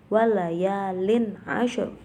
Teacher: Terakhir di situ ada ro tafkhim atau ro yang dibaca tebal karena di situ ada ro yang dibaca sukun, kemudian sebelumnya itu didahului dengan huruf yang berharokat fathah, maka dibacanya tebal